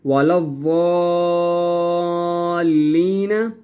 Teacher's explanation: لام کے اوپر زبر ہے، اس لام کو ہم نے ضاد کے ساتھ ملانا ہے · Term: تشدید